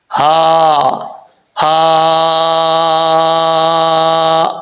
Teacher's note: ہا جو ہے بھاری ساؤنڈ کے ساتھ پڑھا جائے گا، اس کو باریک پڑھنے کی ضرورت نہیں ہے، کیونکہ اس کا حلق جو ہے جس حلق سے یہ ادا ہوتی ہے وہ حلق، اس حلق کا تعلق سینے کی طرف ہے، منہ کی طرف نہیں ہے، اس لیے اس کو بھاری ساؤنڈ کے ساتھ پڑھیں گے۔